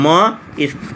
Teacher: म जो है यह नासिका और ओष्ठ के उच्चारण में आता है